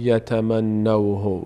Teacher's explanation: نون تبدیل میشه به یا ادغام صورت میگیره